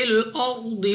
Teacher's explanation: را ساکن سے پہلے حرف پر زبر تو را کو پر یعنی موٹا پڑھنا ہے